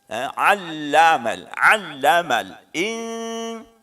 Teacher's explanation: 'Allamal ini huruf pertama ain, 'allamal lamnya ditekan